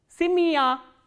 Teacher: this ya sound is pronounced as a combination of two sounds, which is e kratke and plus a sound